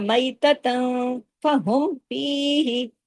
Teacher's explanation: یکم میتتن, مئی میتتن, تا دو زبر تن کی, تنوین کے بعد فا ہے نا, اس لیے اخفا ہو رہا ہے